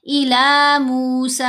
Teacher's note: تو ہم نے سین کو یہاں لمبا کرنا ہے 4 حرکات کی مقدار